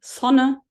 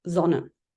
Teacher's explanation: zon with a voiced uh fricative and as it turns out those L1 English Learners of German um carry over the English s